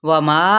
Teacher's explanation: یہاں پہ مد اصلی بالالف بھی ہے اور ساتھ میں 4 حرکت اس کو لمبا بھی کھینچیں گے